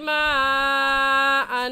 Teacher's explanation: इस मद को 4 अलिफ के बराबर खींच कर पढ़ेंगे, न इससे कम और ना ही इससे ज़्यादा। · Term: मद्दे मुत्तसिल